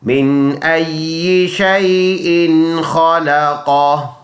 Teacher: اگلا آیات پڑھیں گے، من ای شیء خلقہ، دوبارہ من میم نون زیر من، حمزہ یا زبر ای، یا زیر یہ، من ای، شین یا زبر شی، حمزہ دو زیر ان، شیء، خا زبر خا، لام زبر لا، خالا، قاف زبر قا، خالقا، ہا الٹا پیش ہو، خالقہ، رکیں گے ہا کو سائلنٹ کر لیں گے، ہا کی حرکت کو سائلنٹ کر لیں گے